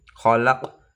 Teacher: qalqalah sugro karena qofnya sukunnya matinya asli